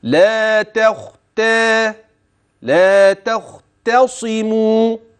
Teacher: الانتقال من التاء المرققه الى الخاء المفخمه لا تختى لا تختصموا التاء ترقق الخاء تفخم التاء مره ثانيه